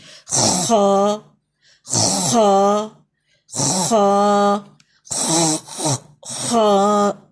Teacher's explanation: اس کی آواز جو ہے یہ فل ماؤتھ کے اندر ہوتی ہے, ہیوی ساؤنڈ آئے گی · upper part of the throat, گلے کا جو اوپر والا حصہ جہاں سے خراش ہوتی ہے نا, یہ والا جو حصہ ہے یہاں سے ادا ہوگا. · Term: ہیوی لیٹر